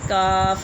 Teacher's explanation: زبان کی جڑ کا آخری جو کوے کے پاس ہے اس سے پچھلا حصہ جب اوپر کے تالو سے لگے، وہاں سے ان کو حروف لہاتیہ کہتے ہیں، ٹھیک ہے، کاف وہاں سے ادا ہوتا ہے۔